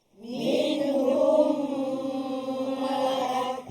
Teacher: Min yang pertama tu tak dengung. Nun mati bertemu dengan ha. Izhar. Halqi.